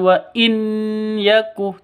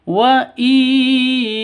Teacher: Cara bacanya masuk ke ya disertai dengung 2 ketukan. Karena idgham bigunnah masuk dengan dengung begitu.